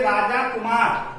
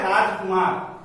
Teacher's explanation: अगर पूर्व पद में दीर्घ स्वर हो तो दीर्घ स्वर ह्रस्व स्वर में बदल जाता है।